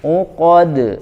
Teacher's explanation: maka pantulannya langsung ya kayak kita memantulkan bola langsung mantul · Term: huruf-huruf Qalqalah